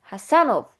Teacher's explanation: Həsənov bax ənin üzərinə düşdü.